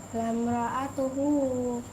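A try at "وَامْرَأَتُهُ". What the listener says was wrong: Salah, bukan lam. Ya, bukan lam ra'atuhu tapi wam.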